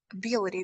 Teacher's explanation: So the stress should go on the second syllable. Ability. B-I-L should be stressed.